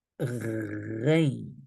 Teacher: Nothing will touch at all, but the air is going through to create ghain. Ghain. You don't feel you are pushing air because the air is keep being here, okay?